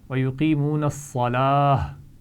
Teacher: گول تا کو ہم ہا ساکن سے بدل کر پڑھیں گے